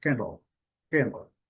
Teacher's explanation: A pronúncia do L. E a pronúncia em duas sílabas, uma mais forte e a outra bem fraca